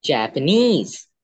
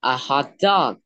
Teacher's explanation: So the last da will be stressed, da da da.